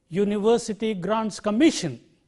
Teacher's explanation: Can you see how the word commission stands out from grants and university comparatively?